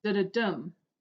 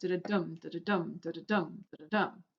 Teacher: 2 unstressed syllables followed by 1 stress. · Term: anapest